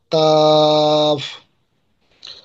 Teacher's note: জিহ্বার গোড়া থেকে একটু আগে বাড়িয়া তার বরাবর ওপরের তালুর সঙ্গে লাগাইয়া